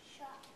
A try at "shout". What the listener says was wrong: Not shot. Remember, O-U says ow. So try again. Shout.